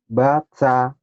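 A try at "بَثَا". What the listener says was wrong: Basa. Bukan batsa ya. tulisan Latin tuh satu TSA. T-nya jangan dibaca. Basa gitu.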